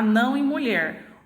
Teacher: na palavra não a minha sílaba tônica ela vem na última posição então ela é classificada como oxítona a palavra mulher da mesma